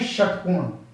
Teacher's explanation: मूर्धा जब जीभ टेढ़ी हो जाती है तो हम बोलते हैं षटकोण